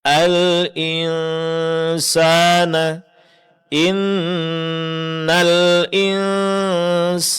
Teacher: Pertama ketika nunnya bertasydid, inna. Yang kedua ketika nun sukun, setelahnya huruf sin, yaitu ikhfa